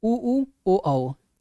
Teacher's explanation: इसको बोलने से ओठ गोलाकार हो जाएगा इसलिए ये जो है वृत्त मुखी में हो जाएंगे और बाकी